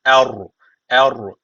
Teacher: bakılır üstten bağlanıyorsa ra kalın O zaman burada kalın okunacak e e'den ödün vermiyoruz ama e ince ra kalın